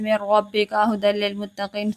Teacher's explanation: ملانا ہے، ادغام کرنا ہے لیکن غنہ نہیں کرنا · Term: ادغام بلا غنہ